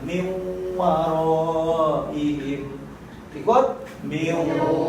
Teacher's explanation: Ada guna 2 harokat dengan nun mati jumpa dengan waw. Ini namanya idgham ma'agun guna. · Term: idgham ma'aguna